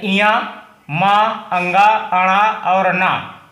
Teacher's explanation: यह नासिक के व्यंजन है इनको नासिका से यानी नाक से लिया जाता है